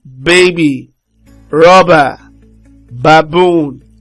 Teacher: the B is a voiced bilabial plosive consonant sound.